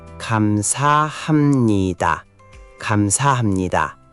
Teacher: It's written hamnida, but it's pronounced hamnida. The pieb before nieun becomes an m sound. This is called nasalization and it makes Korean flow more smoothly.